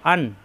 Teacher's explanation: যেমন না, জি না, হামজা জবর আমিল বে নুনের সাথে, আন, এই নুনে আছে সাকিন, এটা ইজহারের হরফ, এর বাম পাশে আছে আইন, অর্থাৎ ইজহারের হরফ, কোনো গুণ্য হবে না